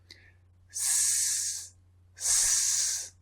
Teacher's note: the S sound, S, is unvoiced because there's no vibration